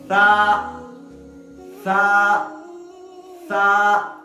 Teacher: سا کا مخرج ہے زبان کی نوک اور دانت کا کنارہ، زبان کی نوک اور دانت کے کنارے کو جو ہم ملائیں گے تو نکلے گا سا۔